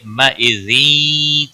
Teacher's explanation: تنوین کے بعد حرف یرملون کا یا ہے، یہ ادغام باغنہ ہوگا